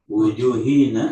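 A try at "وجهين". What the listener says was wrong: wajhaini. Kalau wujuh pakai wawu, ini kan nggak ada wawunya. Wajhaini.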